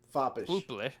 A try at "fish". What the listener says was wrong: where is the L in that word